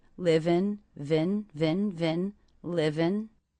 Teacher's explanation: the ending consonant sound of live links into the beginning of the next word.